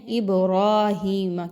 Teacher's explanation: با پر جزم کا نشان ہے جو کہ حروف قلقلہ میں سے ہے، تو با کو ہم اس لیے ہلا کے پڑھ رہے ہیں